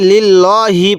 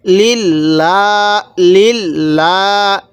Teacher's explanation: এই লামের পূর্বে যদি এইরকম জের থাকে তাহলে ওই লামটা আমরা চিকন করে পড়ব, অর্থাৎ বারিক করে পড়ব